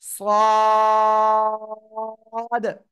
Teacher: জিহ্বার আগা কোথায় লাগাবো সামনের নিচে নিচের এই যে দুই দাঁত দুই দাঁতের পেট ও আগার সাথে লাগাবো লাগিয়ে আমরা উচ্চারণ করবো একটু মোটা আওয়াজে